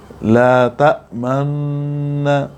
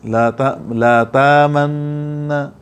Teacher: ہونٹوں کو گول کر کے غنہ کے درمیان ہونٹوں کو گول کرتے ہیں، حفص میں بھی ہے اور ابو جعفر رحمہ اللہ کے علاوہ تمام قراءات میں ایسے ہے کہ ہونٹوں کو گول کر کے اشمام کریں گے. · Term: اشمام بالحرکت